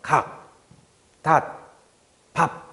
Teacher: 닷 밥 이런 식으로 발음했을 때 분명히 성대가 울리는 거 같다가 받침에 나오는 기억 디귿 비읍이 발음이 되는 순간 성대에 울림이 멈춰요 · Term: 안 울림 소리